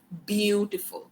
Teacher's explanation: बी को मैं बहुत ज्यादा थोड़ी टेंशन देके बोल रही हूँ, बी पे मैं ज्यादा फोकस कर रही हूँ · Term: स्ट्रेस